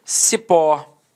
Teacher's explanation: Repare que a sílaba tônica é a última e ela é terminada em O.